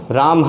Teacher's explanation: विसर्ग के उच्चारण में जो ध्वनि होगी वो एक झटके के साथ में बोली जाएगी, हा का उच्चारण करते हुए। यानी जब हम विसर्ग को बोलेंगे तो झटके साथ में हा की ध्वनि निकलेगी।